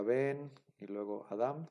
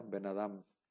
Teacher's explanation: si fuera una sola palabra se debe de pronunciar de corridito no se pronuncia Ben y luego Adam se pronuncia benadam como si fuera una sola palabra y el acento se se elimina el acento de la primera